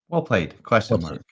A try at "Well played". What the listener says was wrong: Question. Played. Well played. If you do the intonation at the end of well played, it becomes a question. Well played. Well played. But if you go up and then down, well played, then it's like, oh snap.